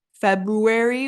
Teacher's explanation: It's a very subtle R sound, but it is there, and it comes right after the B, February, which is like making the sound really difficult because you have that B and R.